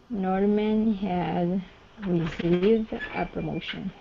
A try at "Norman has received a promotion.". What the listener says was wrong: Okay, good. Has received a promotion. Very good.